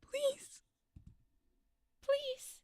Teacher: It breaks from your normal speaking tone. And that is gorgeous because it sounds like you're trying to hold in tears.